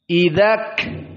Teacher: Si syiddah duluan dipakai, baru al-hams setelah beberapa waktu dipakai.